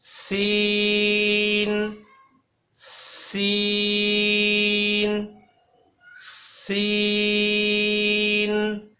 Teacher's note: سین بھی سیٹی کی طرح ادا کرنا ہے، یعنی کہ سین میں بھی سیٹی کی آواز لے کر آنی ہے۔ سین کے لیے بھی زبان کی نوک کو ثنائے سفلی کے کناروں کے ساتھ مضبوطی سے لگانا ہے تو سین ادا ہوگا۔